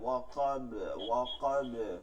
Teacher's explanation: কলকলার হরফ, প্রতিধ্বনি করে পড়তে হবে